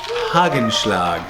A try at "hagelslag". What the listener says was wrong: Well, any Dutch person hearing hagelslag, thinks he just came from Germany, but no, it's hagelslag. So you have to pronounce it as hagelslag, and then it's back in the throat.